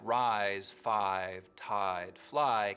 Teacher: words like rise five tide fly keep their full eye diphthong